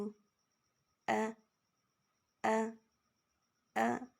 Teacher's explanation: حمزہ کو جھٹکا بھی دینا ہوگا، یعنی جھٹکے سے شروع ہوتا ہے، اسی طریقے سے کھینچنا بھی نہیں ہے.